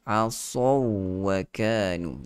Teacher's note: sad itu ada sifat itbaq, ada juga sifat isti'la, tebal. So walaupun ada waw di situ, dia menarik untuk kita nipiskan bacaan kerana lin kan sedikit di situ.